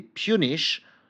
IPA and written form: pju: niʃ (Punish)